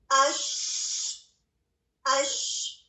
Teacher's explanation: آپ کلیئرٹی کے ساتھ محسوس کرتے ہیں کہ یس ہوا جاری رہتی ہے اور اس کو ہمس کہتے ہیں، کیونکہ اس کی آواز میں بہت زیادہ بلندی نہیں پائی جاتی